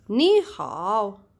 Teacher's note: a third immediately after a third it's gonna be second to third